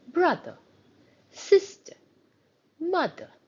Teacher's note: a little shorter because we have something that's preceding it and it's the first syllable that takes the stress · We say it as brother, sister, mother. So the first part takes the stress, which means the ER at the end is a shorter sound